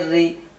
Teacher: را کے نیچے زیر ہو تو را باریک پڑھا جائے گا